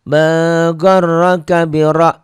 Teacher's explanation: ini tebel tafkhim karena ro-nya baris di atas